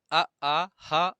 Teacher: अ आ ह और विसर्ग यह भी आपका कंठ के अंतर्गत आता है